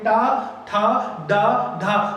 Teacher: ये जो चा होता है, चा बोलने पे जीभ थोड़ा आगे फ्लैट होके टच होती है ऐसे, और टा बोलने पे जीभ थोड़ा मुड़ती है और थोड़ा पीछे जाके लड़ती है। तो एक बार चा बोलिए, चा, फिर टा बोलिए। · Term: मूर्धन्य वर्ण